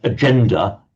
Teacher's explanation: the g sound has become a j, which it does now in Italian and English and other languages before an e and an I.